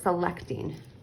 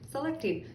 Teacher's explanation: I don't really enunciate that short E a lot. I kind of say it a little bit quicker, but it's still short